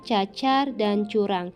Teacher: huruf C yang bercirikan mati, oral, laminopalatal, dan afrikatif.